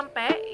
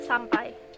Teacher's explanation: Kata ampe yang ditulis oleh Firsa Besari pada cuitannya adalah bentuk morfem yang mengalami pengurangan fonem S di awal kata, dan bentuk yang benar adalah sampai. Pelafalan tersebut menghilangkan konsonan awal kata dan pengucapan diftong AI menjadi E.